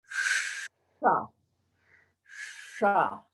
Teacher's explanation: the sha, that's the third mouth position, sha, where the tip of the tongue moves towards the hard palate, just behind the gums, which are behind the teeth, behind that ridge of the mouth.